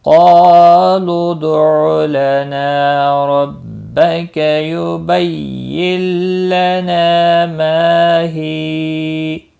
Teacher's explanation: قاف مستعلیہ ہے، پر پڑھا جائے گا، اس کے ساتھ الف بھی ہے، یہ بھی پر پڑھا جائے گا۔ جب ایک ہی کلمے میں آ جائیں گے مستعلیہ کے بعد الف تو وہ بھی پر پڑھا جاتا ہے۔